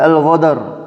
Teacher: lahjah yang mengubah huruf qaf menjadi huruf ghain